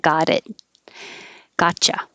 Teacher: t changes to a d and you don't release the last t just hold it